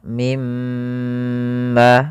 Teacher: kita mendapati mim yang bertasydid maka kita namakan dengan bacaan ghunah panjangnya adalah ditahan dua harakat kemudian baru dilepas